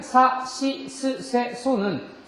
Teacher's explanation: 성대에 손을 대고 발음을 해도 절대로 그 성대가 떨리지 않습니다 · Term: 무성음